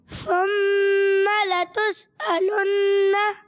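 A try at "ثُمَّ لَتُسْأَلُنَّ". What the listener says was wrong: सीन की अदायगी हो रही है मगर थोड़ी कमज़ोर हो रही है, इसको और क्लियर करें। सुम्मा लतुसअलुन्ना। सुम्मा लतुसअलुन्ना।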